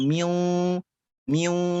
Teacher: Misalkan miu, miu bukan miwa, tapi miwa ke hidung. Miu, pada saat miu, hurufnya lisan kita mengucapkan wau, tapi ke hidung. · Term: gunnah